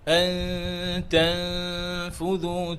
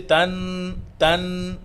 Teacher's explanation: No sukun, no fatha, no kasra. So noon will be hidden. No sound for noon. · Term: Ikfa